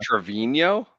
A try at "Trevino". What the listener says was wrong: You mean Trevino? That is not how you say it. Trevino. There is no yo at the end of this. Trevino.